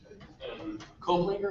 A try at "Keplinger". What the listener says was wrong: That's Keplinger. There's no O.